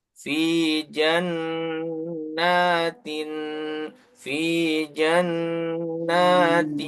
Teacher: n-nya pindah ke wau karena tanwin bertemu wau jadi Idgham dan ditahan selama dua harakat